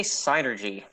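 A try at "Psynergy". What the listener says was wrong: But the P is not that silent.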